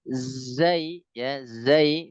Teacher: dia lidahnya datar ya berada di gigi seri yang bawah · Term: huruf Zai